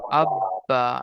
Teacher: যেমন হামজা বা জবার আব বা জবার বা আববা দেখছেন দুবার উচ্চারণ হচ্ছে। একবার হামজার সঙ্গে হচ্ছে একবার বা কেবল শুধু বাই উচ্চারণ হচ্ছে। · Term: তাজদিদ